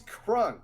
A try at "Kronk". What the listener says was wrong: Did you call him Crunk? Kronk. You said you're saying Crunk. It's Kronk.